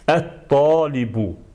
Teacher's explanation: Bax, bu sözə əl artiklı qoşularkən, əl artiklındakı, deməli, bu ləm hərfi yazılır yəni yazılışda qalır, amma tələffüzdə isə tələffüz olunmur. Tələffüz olunmur və onun əvəzinə əl artiklından sonra gələn birinci bu şəmsi hərf şəddələnir.